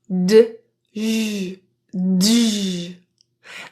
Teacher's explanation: The J sound is a voiced affricate sound. It just means that there are two consonant sounds together, the D and J.